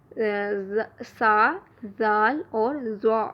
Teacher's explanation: زبان کی نوک جب اوپر والے دو دانتوں کے سرے سے لگے تو اس سے سا، زال اور زو ادا ہوتے ہیں. زبان کی نوک جب ثنایا علیہ یعنی سامنے والے اوپر کے دو دانتوں کی نوک سے لگے تو یہاں سے سا، زال اور زو ادا ہوں گے